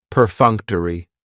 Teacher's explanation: That third syllable has the schwa and it's going to end with that long e sound.